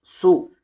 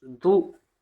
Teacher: پیش کی آواز آگے کو جاتی ہے اور ہونٹ گول ہوتے ہیں. سین پیش سو، دال پیش تو سدو، سین کے اوپر پیش کی حرکت ہے، پیش کی حرکت کو جلدی پڑھیں، ذرا بھی نہ کھینچیں.